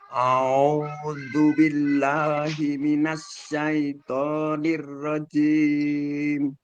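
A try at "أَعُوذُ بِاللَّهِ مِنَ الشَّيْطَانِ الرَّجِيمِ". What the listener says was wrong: Cuma kurangnya mungkin di syaitoni, minasya, shinnya itu mungkin agak sedikit ke dalam ya lidahnya. Jadi yang dipakai lidah bagian tengahnya, bukan yang depan. Kalau depan nanti keluarnya pasti huruf sin, minasa, minasa. Nah, ini bukan sin tapi ini shin. Sehingga yang perlu ditekan adalah tengah lidah kita. Minasya, minasya, sya. Seperti itu.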